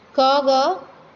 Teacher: हमारे मुख की वायु है वो कम मात्रा में बाहर निकलती है, उसे हम अल्प प्राण कहते हैं।